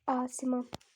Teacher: Sait A uzun tələffüz olunur lakin açıqdır